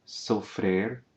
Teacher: you can hear the closed vowel in the infinitive sofrer